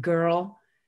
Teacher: your mouth is saying er. You don't hear a vowel when you say the word. And er is a totally unitized vowel.